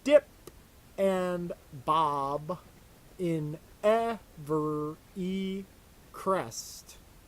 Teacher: you're supposed to go up down up down up down, stressed unstressed stressed unstressed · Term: meter